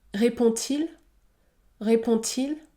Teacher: forme interrogative avec le pronom qui suit par exemple répond-t-il répond-t-il le D se prononce t